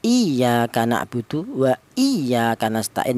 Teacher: Kalau yang ya yang bertasdid di huruf yang berharakat kasrah, contohnya di surat al-Fatihah, iyaka na'budu wa iyaka nastain ya, lafal iya itu ditekan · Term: nabr